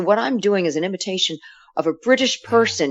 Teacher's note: you can hear that I'm resonating through the nose that I'm not dropping the jaw and that's that's the mouth placement that they're used to having